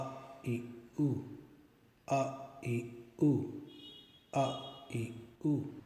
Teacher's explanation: This is the alif sound from the frontal side of the mouth. Just open the mouth a little bit and say a, e, u, a, e, u, a, e, u.